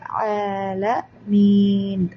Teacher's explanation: ഇപ്പൊ ആല ആല 2 കൗണ്ട്. ല ല താഴ്ത്തി ഉച്ചരിക്കുക. ലോമീൻ എന്നൊന്നും പറയണ്ട.